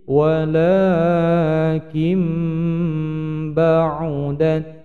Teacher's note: Ini bukan lagi nun sukun tapi berubah menjadi mim bacaannya, bacaan dari iqlab.